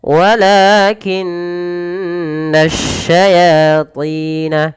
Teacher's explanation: Tahankan suara nun karena dia ada bacaan gunnah pada lafal nun berharakat tasydid. langsung walakinnasyayatina kafaru, yati sama mad tabi'i, kafaru mad tabi'i lagi.